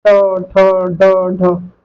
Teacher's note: सब में आपका जीभ मुड़ रहा है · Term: मूर्धन्य ध्वनियां